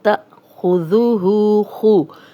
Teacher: پہلے بھی میں نے آپ کو بتایا تھا کہ الف ہمیشہ خالی ہوتا ہے، جس الف کے اوپر زیر زبر پہ یا جزم ہو وہ حمزہ ہے، اور جب حمزہ پہ جزم ہو تو جھٹکے سے پڑھا جائے گا، تأخذوہ، خو، خا موٹا حرف ہے اور ذال نرم ہے، سیٹی کی آواز نہیں آئے گی